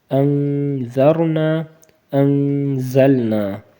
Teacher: یہاں پہ بھی نون ساکن ہے لیکن اس کے بعد زا ہے، تو زا اگر بعد میں آئے یہ بھی حروف اخفا میں سے ہے، یہاں پہ بھی اخفا ہوگا